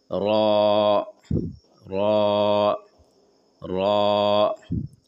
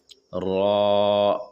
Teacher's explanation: بولتے سمے آپ دیکھیں گے آپ کا زبان کا نوک اوپر کے تالو میں ہلکا سا سٹے گا